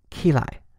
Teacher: In this phrase, lai is reduced to a toneless form.